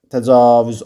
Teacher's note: Təcavüz A da uzun tələffüz olunur